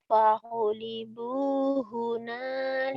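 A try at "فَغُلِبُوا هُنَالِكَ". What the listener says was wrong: pagulibu bukan pahulibu pagulibu pagu pagulibu pagulibu pagulibu hunalika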